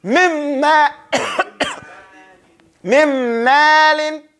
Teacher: The noon is not pronounced. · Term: complete idgham